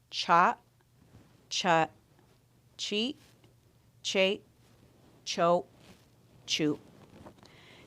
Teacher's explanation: We will finish off with a glottalized C wedge, and we are going to force that sound. We're going to force that.